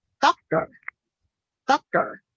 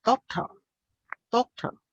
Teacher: they pronounce D instead of T when the T is in the middle of a word